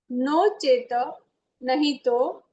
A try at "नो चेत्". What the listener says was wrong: नो चेत नहीं, नो चेत तो हमें हलंत है ना, तो पूरा नहीं है, नो चेत।